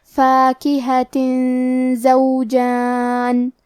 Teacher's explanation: کلمت فاکہہ کے آخری میں تا کے نیچے تنوین زیر ہے، پھر حرف زے آتا ہے کلمت زوجان، زے حروف الاخفاء میں سے ہے تو ہم یہ حکم کو غنہ کے ساتھ ادا کریں گے